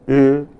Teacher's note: a vowel which is a front vowel but said with lip rounding. So you say A, but with lips rounded, you produce an Ö.